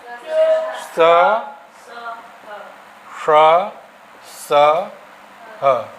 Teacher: ऊष्म वर्ण है और ये महाप्राण भी हैं